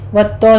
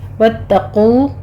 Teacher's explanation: वत्तो नहीं कहना आपने, वत्तकू कौफ मोटा पढ़ेंगे